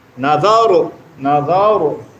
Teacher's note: ra tanda mati sebelum baris atas dia baca secara tafkhim